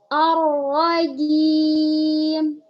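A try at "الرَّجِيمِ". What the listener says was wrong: Suaranya turunkan lagi. Soalnya masuk hidung. Ar-rajim.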